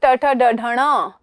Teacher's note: च छ ज के बाद ट ठ ड ढ ण, ठीक है, ये हमारे होंगे मूर्धा से